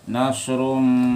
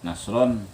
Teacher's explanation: Nasrum, aturannya nasron, tapi karena ketemu mim nasrum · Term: idgham bi gunnah